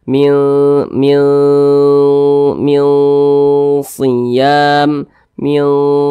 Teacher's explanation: tidak terlalu jauh tidak juga terlalu dekat jadi di tengah-tengah begitu maka cara membacanya itu disamarkan kemudian juga didengungkan jadi kadar Gar dan kadar dengungnya itu ya di tengah-tengah imbang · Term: Ikfa Hakiki ausat